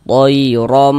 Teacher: dibaca tafkhim, dibaca tebal. Sehingga pangkal lidah kita naik terangkat ke atas, tebalkan huruf ro-nya.